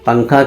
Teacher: نون کی آواز کو ناک میں چھپا کر پڑھنا چاہیے، یعنی نوک زبان تالو سے ہٹا کر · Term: اخفا